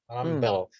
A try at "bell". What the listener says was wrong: Bell. not bill.